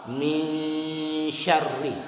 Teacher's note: samar-samar bunyi nun masuk ke bunyi shin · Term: ikhfa